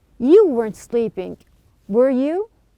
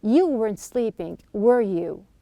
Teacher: I'm going to pronounce that once with a rising tone and the other time with a falling tone.